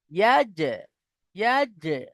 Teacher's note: ইয়া জিম জবর ইয়াজ, ইয়া জিম জবর ইয়াজ, ইয়াজ, এইভাবে। কারণ জিম হলো হুরুফে কলকলার মধ্যে একটি, তাই জিমকে এখানে ইয়াজ এইভাবে আমাদেরকে কলকলা করতে হবে